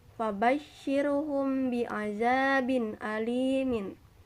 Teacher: setiap minum sukun bertemu ba sehingga hurufnya berkumpul di dua bibir cara membacanya yaitu dengan memasukkan ke dalam huruf setelahnya sehingga seperti berharakat tasydid disertai dengan dengung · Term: Ikhfa Syafawi